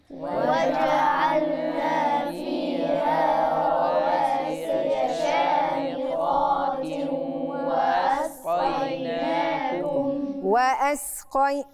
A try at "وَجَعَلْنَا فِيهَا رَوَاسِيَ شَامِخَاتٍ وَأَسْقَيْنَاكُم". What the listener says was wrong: توسط بس ما عنديش غنة. توسط بس.